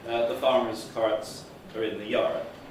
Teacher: R is pronounced wherever it's in the orthography, wherever it's in the spelling.